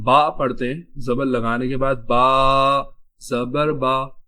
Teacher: آواز تھوڑی سی اونچی ہو جاتی ہے، منہ تھوڑا زیادہ کھل جاتا ہے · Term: زبر کی ادائیگی